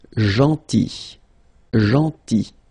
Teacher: So remember this final L is not pronounced.